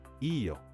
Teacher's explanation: answers using yo with a rising pitch.